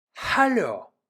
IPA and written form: ˈhaloː (Hallo)